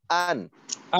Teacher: আমরা পড়বো না, গুন্না ছাড়া স্পষ্ট করে পড়বো। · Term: ইজহার